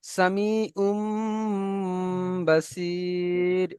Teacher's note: আইনের উপরে দুপেশ তানবিন এসছে, তানবিনের পরে বা এসছে, তাই এই তানবিনের আওয়াজকে মিমের দ্বারা পরিবর্তন করে একালি পরিমাণ গুণনা করে পড়তে হয়, একে বলা হয় ইকলাব।